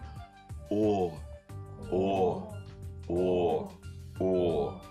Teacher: Губы у нас округлой формы, немного вытянутые вперед. Выдох должен быть фонационный, то есть теплый. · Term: Звук О